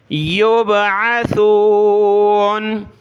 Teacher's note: سا پر زبان نکالیں، سیٹی کی آواز نہیں آنی چاہیے